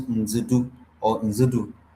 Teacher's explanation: This T becomes a D sound, a clear D sound.